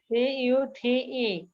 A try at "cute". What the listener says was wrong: সির উচ্চারণ ক হবে না, সির উচ্চারণ খ হবে।